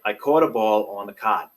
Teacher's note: Another important feature of Mid-Atlantic English is our strong resistance to what linguists call the caught-cot merger.